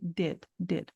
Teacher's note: É um som de I com o formato da boca em E.